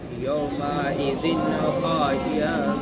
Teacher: یہاں پہ اظہار ہوگا. یہاں پہ نون کو ظاہر کر کے پڑھنا ہوگا.